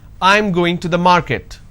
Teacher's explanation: this is a statement and it's a flat intonation